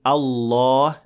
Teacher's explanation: the lamb in Allah is of course full mouth